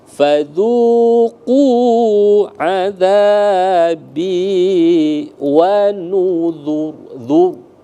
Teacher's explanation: Jadi ditebalkan sempurna huruf ra-nya itu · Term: tafkhim tebal